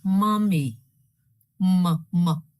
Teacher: begins with the nasal bilabial